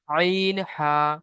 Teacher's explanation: হলকের বা কন্ঠনারি মাঝখান হতে উচ্চারিত হয় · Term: দুম্বার মাখরাজ